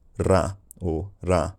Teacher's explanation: for some people in London it was probably a Trill or tap